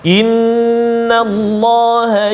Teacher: Pertamanya inna, wajibal gunnah, 2 harakat.